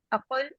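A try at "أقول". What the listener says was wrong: इसको इसको काफ नहीं पढ़ना, इसको स्पोकन अरबिक में इसको गा पढ़ते हैं, अयवा, ग.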